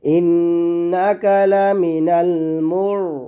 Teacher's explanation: মিম র পেশ মুর, র সেখানে মোটা করে